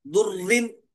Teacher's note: اب یہاں پر دیکھیے نوٹ اس میں ایک بتلایا گیا، را پر تشدید ہو اور اس سے پہلے کی حرکت کو نہیں دیکھیں گے، بلکہ را مشدد پر زیر ہو تو را کو باریک پڑھیں گے